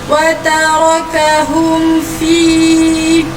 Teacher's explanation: mim mati bertanda sukun jumpa dengan huruf fa, maka terjadinya izhar syafawi. Jadi perlu dibaca dengan jelas tanpa dengung.